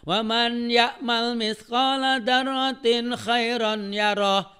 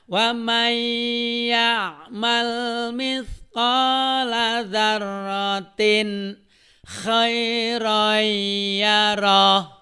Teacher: nun mati dan tanwinnya bertemu dengan huruf iya, maka bunyi N-nya masuk melebur kepada huruf iya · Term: idgham bi guna